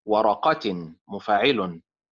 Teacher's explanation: ورقة كما قلت لكم مكونة من أربع حركات فإيه فساكن. إذن النبر فيها على الحركة الأولى والثالثة، حركة الواو وحركة القاف